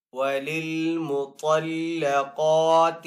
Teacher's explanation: طا کو پر پڑھیں گے، حروف مستعلیہ میں سے ہے ، قاف کو بھی پر پڑھیں گے، یہ بھی حروف مستعلیہ · بھی پر پڑھیں گے، یہ بھی حروف مستعلیہ میں سے ہے، قاف کو ایک الف دو حرکات کے برابر کھینچ کر ادا کریں گے کیونکہ قاف کے اوپر کھڑا زبر ہے